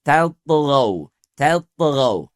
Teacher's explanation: Adapun huruf ta yang berada sebelum huruf to tidak dipengaruhi oleh ketebalan huruf to. Jadi tidak tot, tapi tatghaw.